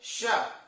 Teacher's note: देखो जबान आपकी कहां जा रही है, ऊपर जा रही है, तालू पे लग रही है, तो यानी श का उच्चारण स्थान क्या हो जाएगा, तालु हो जाएगा। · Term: सीटी वाला स